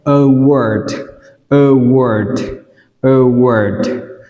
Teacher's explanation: Từ này đọc A đọc là ơ, và từ thứ hai AR đọc là O